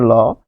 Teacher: ল উচ্চারণ করতে গেলে জিহ্বার বাতাসটা এই যে দুই সাইড দিয়ে বের হয়, এই দিক দিয়ে বাতাস প্রবাহিত হয়। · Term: পার্শ্বিক ধ্বনি